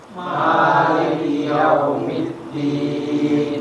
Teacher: Ya, mimnya panjang, dua ketukan, 2 harokat. Lalu huruf dal juga ada tasdid, itu ditekan dan ditahan.